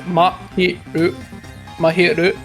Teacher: It's like each vowel is a lot shorter in Japanese.